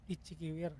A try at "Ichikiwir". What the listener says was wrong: No, salah. harus rendah, low tone.